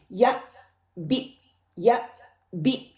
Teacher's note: जब हमजा के ऊपर सुकून होगा तो मेरी ये जो वोकल कॉर्ड है ना ये एरिया जो है बिल्कुल बंद हो जाएगा